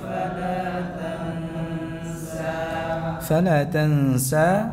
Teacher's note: Berapa panjangnya sa? Dua harakat.